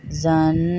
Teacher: نون مشدد ہے غنہ ہوگا